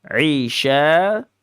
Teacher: shin ini tafasyi. Tafasyi melebar, meluas